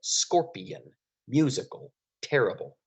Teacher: Do you hear how the accent is on the first syllable? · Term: dactyl